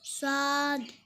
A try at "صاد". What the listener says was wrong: लंबा करते हैं बेटा صاد